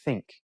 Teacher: with like think it's a soft or unvoiced you don't hum you don't vibrate you just say think but it's still the tongue goes touches